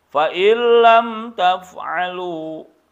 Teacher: Jangan ditahan, fa'il itu salah. Masukkan nunnya ke lam tapi langsung. · nun mati menghadapi lam itu idgham bila gunnah